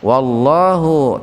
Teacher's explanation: lafaz Allah lebih spesifiknya huruf lam didahului fathah, maka lamnya dibaca tebal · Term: tafhim